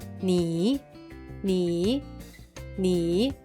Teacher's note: read with me “n”, “i”, with a third tone